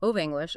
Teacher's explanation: The guide gave some fantastic examples, like if you listen closely, native speakers rarely enunciate of English as two distinct words. It just blends together to sound like of English, almost as one word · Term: linking